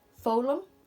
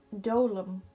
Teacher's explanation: notice how I don't pronounce the F, so the F becomes silent